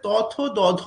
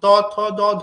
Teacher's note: ত থ দ ধ বলার সময় দাঁতে স্পর্শ হচ্ছিল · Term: দন্তধ্বনি